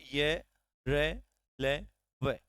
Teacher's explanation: जब आप य र ल व का उच्चारण करते हैं तो आप पाएंगे कि स्पर्श तो हो रहा है लेकिन कहीं पर भी पूर्ण स्पर्श नहीं हो रहा है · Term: अंतस्थ व्यंजन